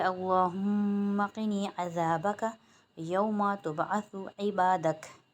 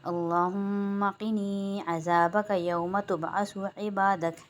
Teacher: اللہم میں اللہ موٹا، ہما میں مشدد غنہ ہوگا، اس میں 1 الف کی مقدار۔ قنی یا مدہ بن رہا ہے 1 الف۔